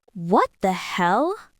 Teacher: not plain, it's what the hell? The stress is on hell.